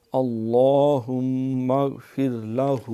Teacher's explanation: یہ اللہم لام موٹا، ہم میم جو ہے مشدد ہے، غنہ ہوگا۔